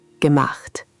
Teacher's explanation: Sharpen the ch in the middle. It's a soft breathy sound, not a hard k.